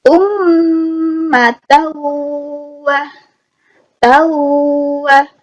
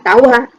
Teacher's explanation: Nah, jadi yang namanya idgham bigunnah jika nun sukun atau mati bertemu huruf mim, nun, wawu, ya. Maka bunyi an dimasukkan atau dilebur ke huruf berikutnya dengan mendengung